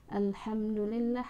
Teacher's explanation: Di sini, huruf mim yang tidak diucapkan bertemu dengan huruf "da". Jadi, pengucapannya jelas di bibir, atau Izhar Shafawi.